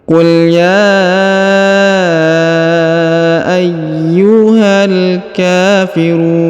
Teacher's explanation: huruf ru dipanjangkan boleh dua boleh empat boleh enam karena di depan huruf ru terdapat wau sukun atau wau mati